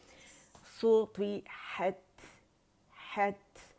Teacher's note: ता की जो आवाज़ कहाँ से निकलेगी, ता के मखरज के पास इसका हमस वाज़े होगा, क्योंकि हम जब ता के मखरज पे जाते हैं तो इसमें शिद्दत की जो क़ुव्वत है, ताकत है, जो आवाज़ सख्ती से हम जाते हैं इसके मखरज बंद हो जाती है ताकत के साथ।